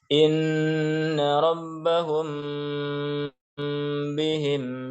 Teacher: kata hum dibaca dengan dengung. Karena di situ ada mim, kemudian bertemu dengan ba. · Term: ikhfa syafawi